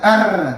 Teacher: Atau juga ada yang mengakalinya dengan menyebutkan R tapi bergetar di pangkal tenggorokan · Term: R berdegot